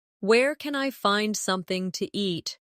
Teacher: In casual speech something to becomes something ta.